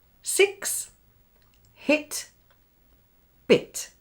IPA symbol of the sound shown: ɪ